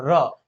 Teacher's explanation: अगर प्रकंपित की बात करेंगे तो यहाँ पे र को हम प्रकंपित व्यंजन कहते हैं। र, क्योंकि र को बोलने के लिए जिह्वा कंपन करती है, इसे लुंठित भी बोलते हैं, इसे प्रकंपित भी नहीं लुंठित भी बोलते हैं।